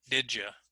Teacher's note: because the D and the Y when they come together very quickly they sound a lot like the J sound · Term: assimilation